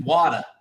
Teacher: certain words where there's like that middle consonant and it just gets swallowed up